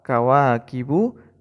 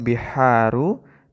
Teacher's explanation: Mad Thobi'i itu panjangnya dua ketukan saja tidak lebih dan juga tidak kurang